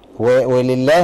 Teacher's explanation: اللام هنا مرققه لان مكسور ما قبلها